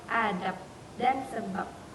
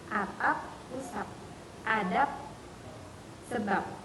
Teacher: Karena konsonan hambatan letuk bersuara B tidak mungkin terjadi pada posisi koda. Ketika dinetralisasikan menjadi hambatan tidak bersuara yaitu P. Sama dengan realisasi yang biasa terjadi pada fonem P.